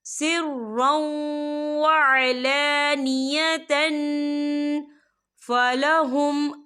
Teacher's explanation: تو ہم یہاں اکفا کریں گے، تنوین کی آواز کو ناک میں چھپائیں گے.